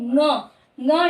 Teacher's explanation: गले में से कंठ में से आवाज आती है साथ में नाक से आवाज आती है नासिक के भी है और कंठे भी है तो कंठे होने